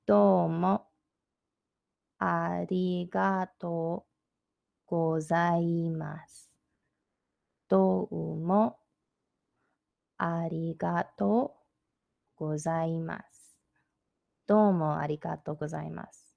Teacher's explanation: at the end of a sentence, usually it's gozaimasu, and you don't hear that u sound, and they kind of drop that.